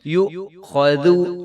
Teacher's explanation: جب حمزہ کے اوپر جزم آئے گی، حمزہ ساکن ہوگی تو اس کے اوپر جھٹکا آئے گا